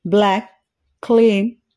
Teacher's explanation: ఈ పదాలలో వోవెల్స్ కి ముందు ఎల్ సౌండ్ ఉండడం గమనిస్తాము అందుచేత ఇవి లైట్ ఎల్ గా పరిగణింపబడతాయి